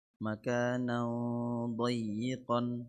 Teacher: نون تنوين بالفتح مخفى عند ضاد المفتوحة بغن حركتين